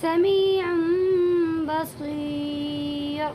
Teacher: یہاں پر بھی دو پیش کی تنوین ہے اور دو پیش کی تنوین کے بعد یہ با آیا ہوا ہے، اسی لیے اس تنوین کی آواز کو میم میں بدل دیں گے